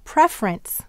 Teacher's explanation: Where is the accent in preference? You're right. It's on pref.